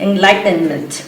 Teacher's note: if you want to sound even more American, you can flatten that T and you can say enlightenment.